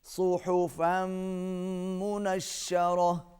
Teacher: منہم ان یؤتی صحفا منشرہ، صاد موٹا، ہا کو حلق سے ادا کریں گے، تنوین کو میم کے ساتھ ملائیں گے، آواز ناک میں جائے گی